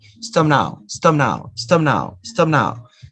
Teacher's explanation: so notice you don't release the air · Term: no aspiration